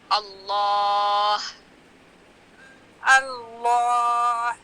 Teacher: جو ہا ہے سب سے آخری حصہ جو گلے کا وہاں سے ہا نکالیں